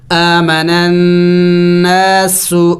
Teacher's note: سین سیٹی والے حروف میں سے ہے، پڑھتے وقت منہ سے سیٹی کی آواز نکلنی چاہیے